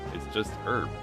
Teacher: We, in America, particularly the Midwest, that H is silent.